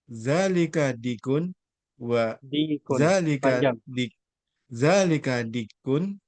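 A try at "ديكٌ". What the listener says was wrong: D-nya panjang. Dikun.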